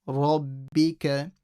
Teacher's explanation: Make sure the ra is heavy.